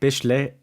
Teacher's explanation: whenever there's just one s, oftentimes it turns into an sch or it makes a sh sound